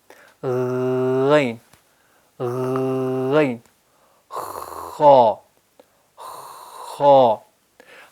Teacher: غین میں بھی ہوا جاری رہتی ہے اور خا میں بھی ہوا جاری رہتی ہے · غین اور خا کا مخرج ہے زبان کی جو آخری جڑ ہے، زبان کی جڑ اور منہ کے اندر ایک لٹکتا ہوا گوشت ہے جس سے چھوٹی زبان بھی کہتے ہیں اور کوا بھی کہتے ہیں۔